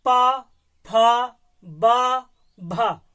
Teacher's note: पा, फा, बा, भा, ओठों से बोल रहे हैं, तो इनका उच्चारण स्थान ओष्ठ हो जाएगा।